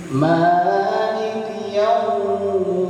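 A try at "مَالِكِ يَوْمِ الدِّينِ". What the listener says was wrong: Yaumnya masih ada yang pendek, harusnya dipanjangin sedikit.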